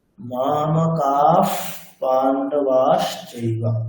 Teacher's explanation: বিসর্গের পরে যদি পকার আসে অথবা ফকার আসে, তাহলে বিসর্গের উচ্চারণটি কেমন হয়? অর্ধেক ফকারের মতো।